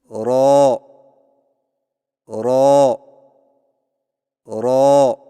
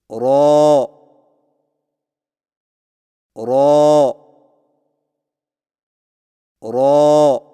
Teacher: را کی ادائیگی میں زبان کی نوک کی پشت کو اوپر والے دانتوں کے مسوڑوں سے لگا کر موٹی آواز میں پڑھیں